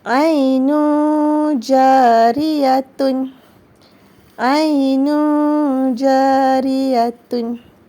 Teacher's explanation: Apabila tanwin baris di depan bertemu dengan huruf jim. Maka hukum tajwidnya ialah ikhfa' hakiki dan dibaca dengan sebanyak 2 harakat